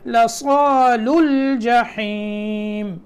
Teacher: لیکن جب ہم اس کو پڑھیں گے تو واو اور دونوں الف بیچ میں پڑھنے میں چھوٹ جائیں گے